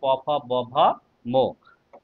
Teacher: অষ্ট মানে ঠোঁট থেকে উচ্চারিত হয় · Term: অষ্টধ্বনি